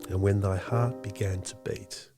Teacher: an iambic line of unstressed stress syllables in a line that mimics a heartbeat rhythm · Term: iambic rhythm